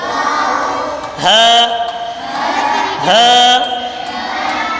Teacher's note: ہا حلق کے نیچے والے حصے سے ادا ہوتا ہے